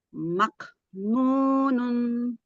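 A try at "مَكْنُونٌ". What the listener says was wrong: Renggangkannya jangan kebanyakan. Nunun. Siddahkan dulu di kaf. Nunun. Mak. Ya, jangan bareng-bareng. Mak. Siddahkan dulu, tempelin dulu di kaf, baru hembusin nafasnya sambil direnggangkan makrotnya.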